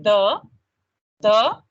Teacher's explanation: The tip of your tongue is touching the upper teeth, lower part, right?